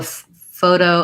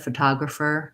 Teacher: photo has the flap, but photographer, we say the T